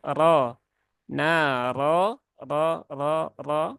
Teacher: huruf r-nya berbaris fathah maka dia dibaca dengan tebal